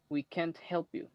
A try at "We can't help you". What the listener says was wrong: You pronounce the T. Don't pronounce the T.